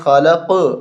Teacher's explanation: یہاں ہم وقف کریں گے تو قلقلہ کریں گے، خلق، آواز دوہری آنی چاہیے قاف کی